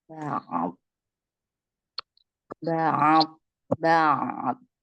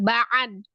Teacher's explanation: Ain sukun kembali ke makhraj ya, al-halki.